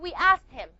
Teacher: The e d is going to be pronounced as a t sound.